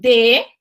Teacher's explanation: ele é um pequeno toquezinho atrás dos dois dentes ali entre o dentro início do palato que a gente chama